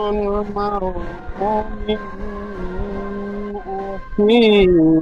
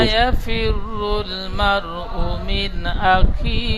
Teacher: মিন বলে গুন্না করবে না